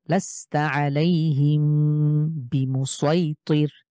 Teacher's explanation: মিম সাকিনের পরে বা হয়েছে বিধায় এখানে আমরা গুন্না করবো